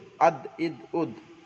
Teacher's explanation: দালের মাখরাজ জিভের আগা সামনের উপরে দুই দাঁতের গোড়ার সঙ্গে লাগিয়ে উচ্চারিত হয় · দাঁতের গোড়ার সঙ্গে লাগিয়ে উচ্চারিত হয় দাল হামজা দাল জবর আদ এখানে একটু কলকলা হবে কলকলা মানে ধাক্কা দিয়ে পড়া